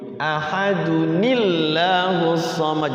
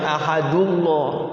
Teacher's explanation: Tapi kalau kita pengen wasol, pengen disambung, maka ahadunnya itu, ini kan tanwin ya. Ahadunnya hilang dunnya. Maka ketika wasol dunnya jadi duni.